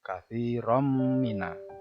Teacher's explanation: Tanwin ketemu mim itu bacaan idgham bihunah